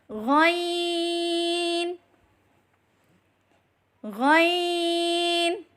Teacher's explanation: حلق کے اوپر والے حصے سے ادا کریں